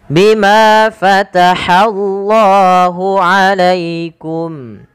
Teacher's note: Bima panjangkan manya dua harakat